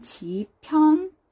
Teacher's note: 비읍과 히읗이 만났어요. 자음 축약이 일어날 거예요. 그러면 지편전. 피읍으로 축약이 일어났어요.